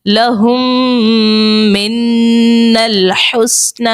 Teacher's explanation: میم مشدد اور نون مشدد دونوں میں غنہ کریں گے